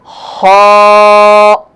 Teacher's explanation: اگلا حرف ہے خا۔ خا جو ہے وہ گلے کے شروع والے حصے سے ادا ہوتا ہے۔ خا اور موٹا بھی پڑھا جائے گا۔